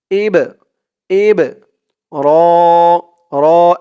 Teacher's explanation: এই বা টা হচ্ছে কলকলার হরফ ধাক্কা দিয়ে পড়তে হবে